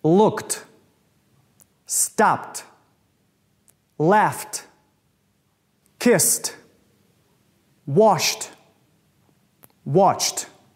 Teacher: произносится как Т после глухих звуков таких как к п ф с ш ч